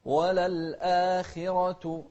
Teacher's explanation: الخاء حرف مفخم لكن إذا كان مكسور يكون أقل تفخيما. لا تقول وللآخرة، لا، وللآخرة يعني الراء بعدها أكثر تفخيما منها لأنها مفتوحة.